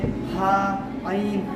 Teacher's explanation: गले के बीच से हा ऐ अदा होता है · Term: मखरज